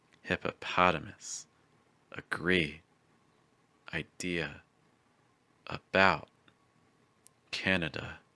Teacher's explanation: our schwa sound again but in an unstressed position this means it's going to be a little weaker and a little faster